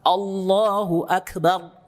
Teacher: Karena ro punya sifat takrir, menggetarkan ujung lidah dengan getaran yang halus, dikit aja getarannya. Yang penting ada getaran.